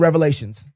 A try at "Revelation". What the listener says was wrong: The book of Revelation. No S. No S. It's a revelation.